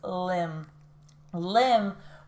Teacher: It has the M and the B here, but that B is silent.